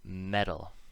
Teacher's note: So, what is the tap sound? So both T and D can make the tap sound, but it is not the T or D sound. It isn't T or D, but it is more like D than T. It is like the Spanish R in pero, which means but, or the Portuguese double R in para, which means stop.